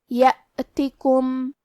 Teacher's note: حمزہ کی ادائیگی حلق کے نیچے والی حصے سے ہے